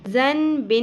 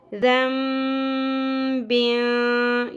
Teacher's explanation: یہاں پر اقلاب کا رول آ رہا ہے. نون ساکن کے بعد بیسیکلی لیٹر با تھا ہمارے پاس، اس لیے ساؤنڈ کو ہم میم میں بدلتے ہوئے پڑھیں گے